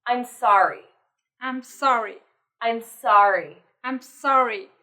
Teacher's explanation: So the first one, I'm sorry, it needs to have a falling tone.